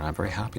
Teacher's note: Canadians tend to end each sentence by moving their tone of voice slightly upward, unlike Americans. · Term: gentle drifting up pattern